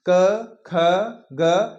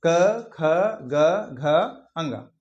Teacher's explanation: देखिए आप महसूस कीजिए अंदर से यहां पर इसका हिस्सा टकराए जबान का सबसे पिछला वाला हिस्सा जो होता है वो यहां पर आपके कंठ में हल्का सा स्पर्श करेगा · हमारी जीभ का पिछला हिस्सा कंठ को स्पर्श करता है, उन्हें हम क्या कहते हैं, उन्हें हम कंठीय व्यंजन कहते हैं। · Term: कंठी व्यंजन